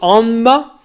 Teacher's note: Et comme c'était vocal et comme le a était nasalisé, ça se prononçait anma